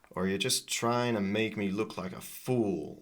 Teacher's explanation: So, the or is so weak here. So, that's basically gone. And then so these two words are really reduced.